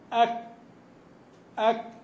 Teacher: تكون الشده في بدايه الصوت في بدايه النطق بالكاف والتاء ثم بعد ذلك ياتي الهمس · ان الكاف والتاء ينحصر بهما الصوت في البدايه